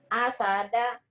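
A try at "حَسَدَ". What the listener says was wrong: Ha. H-nya kok jadi A?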